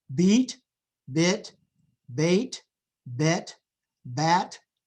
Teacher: So the front vowels go from high to low